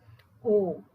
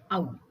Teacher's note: ಕಂಠ ಮತ್ತೆ ಓಷ್ಠ್ಯ ಇವೆರಡೂ ಉಪಯೋಗಿಸುವಂತಹ ಇದು ಓ ಮತ್ತೆ ಔ. ಓಷ್ಠ್ಯ ಅಂದ್ರೆ ತುಟಿ, ಕಂಠ ಮತ್ತೆ ತುಟಿಯ ಚಲನೆಯು ಅಲ್ಲಿ ಬೇಕಾಗ್ತದೆ,